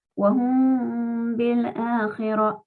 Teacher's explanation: Para leer esta frase tenemos que hacer ikhfa en la mim saken. Tratar de que esa mim salga por la nariz solamente. · La mim, traten de que salga totalmente por la nariz.